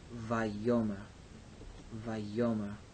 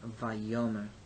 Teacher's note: So this word has these syllables, va, yo, and mer. The accent is on the middle syllable